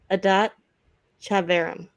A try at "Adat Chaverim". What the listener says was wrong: I think the C is silent.